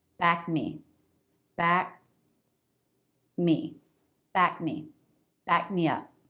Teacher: back me up back me up that means support me here i'm not releasing the k just like the stop t there's just a little lift in sound before the m